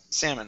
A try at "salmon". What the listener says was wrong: instead of salmon the l is silent salmon salmon